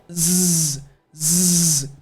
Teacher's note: Your tongue needs to be touching the roof of your mouth, but you're going to buzz Z. You're kind of letting air come right above your tongue, and then you're vibrating. So you should feel the vibration in your throat. Z, Z. And you should also feel the vibration in your mouth. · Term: Z sound